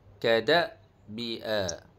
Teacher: pada Hamzah bersifat syiddah dan al-jah, tegas dan terputus